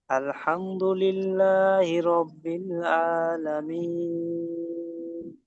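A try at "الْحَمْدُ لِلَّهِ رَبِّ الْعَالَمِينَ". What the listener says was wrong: মাশাআল্লাহ, খুব সুন্দর হয়েছে।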